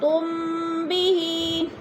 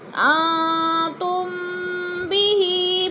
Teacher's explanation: میم ساکن کے بعد حرف با آ گیا ہے تو ادھر اخفاء شفوی، یعنی ناک میں آواز لے جائیں گے، غنہ کریں گے